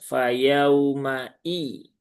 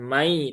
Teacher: harusnya hamzahnya itu terbaca dengan tahqiq atau jelas ya